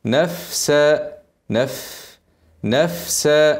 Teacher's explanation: الفاء اهمسها قبل السين عشان ايه ما تاكلهاش السين كده نفسها وبعدين اخف باسناني على الشفا عشان ايه الهمس يخرج بسهوله